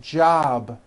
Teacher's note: It's not job with an unvoiced P. Keep the voicing going throughout the whole word. Job with a voiced B ending.